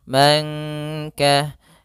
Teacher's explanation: nun sukun bertemu kaf, maka samarkan nunnya kepada huruf kaf. Dia termasuk ikhfa lagi.